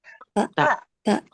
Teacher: Di makharijul hurufnya ee ta dal itu sama tuh ee ujung lidah bertemu dengan gigi seri atas